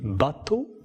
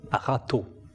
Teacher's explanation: Alors on distingue un B bilabial et puis on distingue un re.